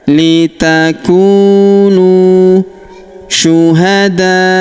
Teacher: huruf da kita panjangkan 4 atau 5 harokat karena di depan huruf da terdapat alif yang di atasnya terdapat tanda garis bacaan panjang.